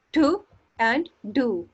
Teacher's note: प्लोजिव तो है लेकिन ये बाइलेबियल नहीं है, ये अल्वेलर है। The air passage is completely closed by the raising of the tip of the tongue, हमारी हवा का प्रेशर मुकम्मल तौर पर रुक चुका है, क्लोज्ड हो गया है, किसके साथ, हमारी टंग के साथ।